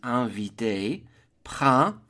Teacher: The word for spring is le printemps, 2 syllables, printemps. The P-R-I-N is a nasal I-N as in invité